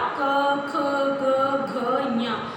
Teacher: ये जो क ख ग घ ऐसे बोलते हैं आप, तो ये हमारे कहाँ से निकलता है, कंठ से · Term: का वर्ग